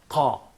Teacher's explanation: uvular means that the final part of your soft palate is used for producing such sound